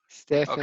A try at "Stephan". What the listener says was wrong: Okay, take out the E. Stephan. Stephan, not Stephan.